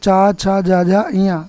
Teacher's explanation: ये पांचों अक्षर कहाँ से बोले जाते हैं प्रिय विद्यार्थियों? तालु से